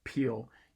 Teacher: you can feel that kind of that puff right after the P opens up, right after your lips open up. And that part is called aspiration. · in between the sort of opening of your lips for the P and the beginning of the E proper, in the middle of the word, there's a little puff of air that comes out of your mouth. If you put your hand in front of your mouth as you say oh, peel, you can feel that kind of that puff right after the P opens up, right after your lips open up.